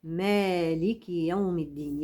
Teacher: احنا بنقرا تبعه حفص عن عاصم بيقرا بالالف مالك يوم الدين يبقى لازم امد مد طبيعي